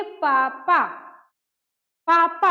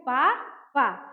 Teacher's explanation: दोनों ओष्ठ एक दूसरे को स्पर्श कर रहा है, यानी छू रहा है, तब हम कहते हैं पापा। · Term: स्पर्श व्यंजन